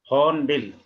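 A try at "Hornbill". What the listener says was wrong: आर की जगह छोड़नी है, आर को प्रोनाउंस नहीं करना है। हाँ, हॉर्नबिल। आर के लिए जगह तो रखनी है, लेकिन उसको प्रोनाउंस नहीं करना है।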